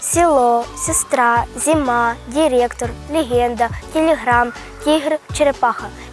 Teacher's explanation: в українських словах і у запозичених приголосних перед е та и не пом'якшується